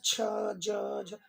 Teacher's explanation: च बोलेंगे तो जिह्वा को ताल में स्पर्श करा दे रहे हैं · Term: च वर्ग